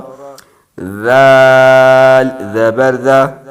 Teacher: ذال زبر ذا، زال سیٹی کے بغیر ہے